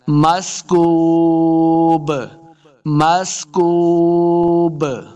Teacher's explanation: با کے اوپر جب وقف کریں گے نا تو با ساکن بن جائے گا، تو ہم نے اس کے اوپر قلقلہ کرنا ہے